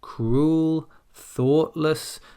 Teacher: start on a mid-tone, and then we go up.